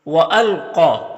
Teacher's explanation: وَأَلْقَى، یہ قاف حروف مستعلیہ میں سے ہے تو اسے پر پڑھیں گے، اور کھڑا زبر ہے اس کے اوپر، کھڑا زبر الف مدہ کی طرح ہوتا ہے تو اسے ایک الف کے برابر کھینچ کر پڑھیں گے۔ یا میں کوئی حرکت نہیں ہے، اس کو نہیں پڑھنا۔